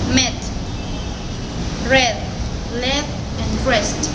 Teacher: this is a front vowel with a short sound